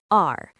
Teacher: At the start, it's a sound between an R and an L. It's a light flap of the tongue, similar to the t sound in the American pronunciation of butter.